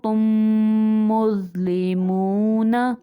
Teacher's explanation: میم ساکن کے بعد دوسری میم آ جائے تو وہاں پہ ادغام شفوی کا قاعدہ ہوتا ہے، یعنی غنہ کریں گے